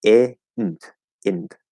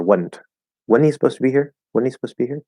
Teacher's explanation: dropping the Z sound. We're saying int.